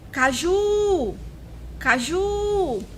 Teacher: Qual foi a sílaba mais prolongada? Foi o Ju, né? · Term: sílaba tônica